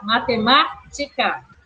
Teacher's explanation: matemática recebeu acento na antepenúltima sílaba, na sílaba ma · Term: proparoxítona